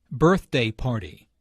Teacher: Notice that the normal stress for a compound noun falls on the first element of the compound.